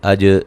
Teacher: جیم پہ قلقلہ کرنا ہے